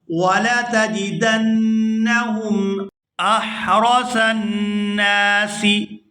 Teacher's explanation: وَلَتَجِدَنَّهُمْ أَحْرَصَ النَّاسِ، یہاں صاد کو نون مشدد کے ساتھ ملائیں گے تو غنہ کریں گے، اور نون کو جب دوسری دفعہ ادا کریں گے زبر کے ساتھ تو اس کو کھینچ کر ادا کیا جائے گا کیونکہ اس کے بعد الف مدہ ہے۔